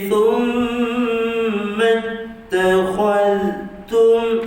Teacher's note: huruf tha, hujung lidah satu hujung gigi atas, mim satu wajibul gunnah, dengung, satu harakat tutup, dua harakat panjang.